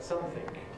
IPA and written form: ˈsʌmθɪŋk (something)